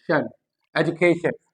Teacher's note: श और न के बीच ये क्या आता है, शुआ साउंड